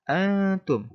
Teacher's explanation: harus menyamarkan suara nun dan memasukkan ke huruf ta sehingga dibaca dengung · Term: ikhfa